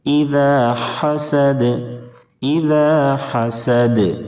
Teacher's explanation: سین کی ادائیگی میں سیٹی جیسی آواز نکلے گی، اور وقف کرنے کی وجہ سے دال ساکن ہو جائے گا۔ · تنوین یا نون ساکن کے بعد حروف حلقی کے ان 6 حرفوں میں سے کوئی بھی حرف آئے تو اظہار حلقی ہوتا ہے، اور اظہار حلقی میں غنہ نہیں ہوتا۔ اذا حسد، ذال کی ادائیگی میں زا کی طرح سیٹی جیسی آواز نہیں نکلنی چاہیے، اذا نہیں پڑھنا ہے۔